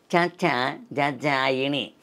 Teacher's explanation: తాళువు సహాయంతో పలుకుతాం అండి